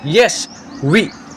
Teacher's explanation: No obstruction in the oral passage. Open approximation. Quick, smooth, non-frictional glide is there. Means there is no friction when we pronunciate these. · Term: semi- vowels